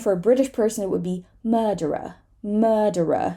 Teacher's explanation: they would just say this R because it is at the beginning of a syllable